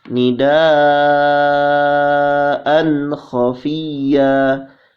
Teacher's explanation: tanwin bertemu dengan kha. Hukumnya idhar khalqi, ya, dibaca tidak dengung atau dibaca jelas